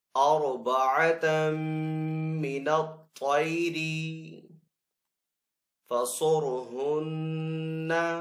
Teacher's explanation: صاد کو پر پڑیں گے اور را کو بھی پر پڑیں گے. صاد حروف مستعلیہ میں سے ہے اور را حروف مستعلیہ میں سے نہیں ہے لیکن ساکن ہے اور اس سے پہلے والے حرف کے اوپر پیش ہے تو اس لیے را پر پڑا جائے گا.